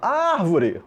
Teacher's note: Sílaba tônica na antepenúltima sílaba. Palavra proparoxítona.